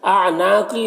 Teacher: نون میں الف مدہ ہے، ایک الف کے برابر کھینچیں گے